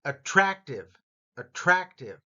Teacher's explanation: Notice the rat part gets the emphasis.